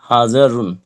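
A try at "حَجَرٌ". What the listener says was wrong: মাশাআল্লাহ, সুন্দর হয়েছে।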